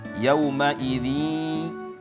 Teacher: idgham bigunah itu harus keluar dari mulut dan keluar daripada hidung ya